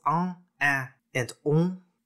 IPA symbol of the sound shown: ɑ̃ ɛ̃ ɔ̃